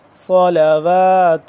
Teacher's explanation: صاد موٹا، واو کو لمبا کریں گے